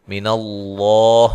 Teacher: لفظ اللہ کو موٹا ادا کرنا ہے، اس سے پہلے حرف پر زبر ہے